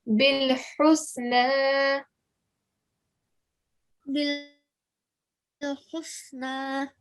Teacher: this ha is one of your letters of throat. So when you're saying it, say it from the middle of your throat